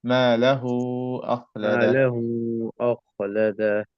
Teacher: We don't say this wow. We don't say wa. This wow is just to stretch the dhamma sound.